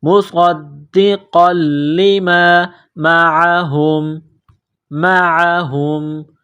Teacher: مصدقا لما، قاف کو موٹا کرنا ہے، نقطہ والا قاف ہے، قاف کو لام کے ساتھ ملائیں گے، لام کو دبانا ہے